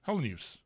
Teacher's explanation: the 4 syllables and the little, almost barely audible Y in there